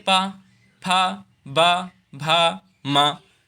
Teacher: होठों से। ओष्ठ व्यंजन इसे कहते हैं क्योंकि ये होठों से बोला जाता है। इसमें जीभ कोई कार्य नहीं करती है।